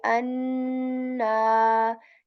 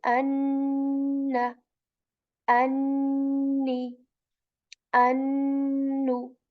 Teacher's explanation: An, like the above palate, right? Tip of the tongue touches the above palate, and so the tongue just keeps on touching the above palate for a second or two